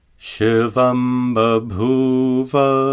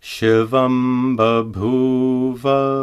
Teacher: Notice that the anuswara is pronounced as a labial ma.